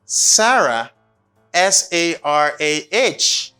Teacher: It's a falling intonation because at the end of this, we don't get our voice up.